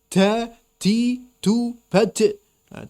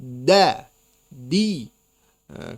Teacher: Da tidak boleh mendesis dan harus ditekan